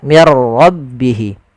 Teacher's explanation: ra itu punya sifat namanya sifat takrir, tapi takrirnya hanya satu saja, tidak boleh berulang. Mir ra, enggak, tapi langsung saja mir rabbihi.